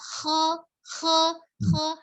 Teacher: Kho-nya dari tenggorokan bagian atas